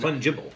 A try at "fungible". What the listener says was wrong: Well, no, it's not two B's. I mean, it's fungible. So the stress on the fun, and